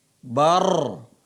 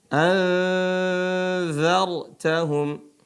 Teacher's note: Ro sukun, sebelum ro ini adalah berharokat fathah. Maka dia dibaca tebal roknya.